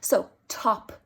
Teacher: you can feel a puff for the t, you can feel a puff for the p at the end of it.